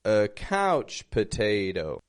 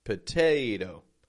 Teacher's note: that t is getting a strong true T because it is the stress syllable